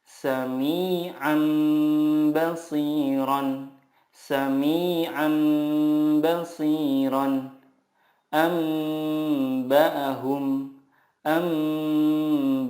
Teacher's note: mengganti nun sukun dengan mim sukun dan disertai gunnah 2-3 harokat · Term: iqlab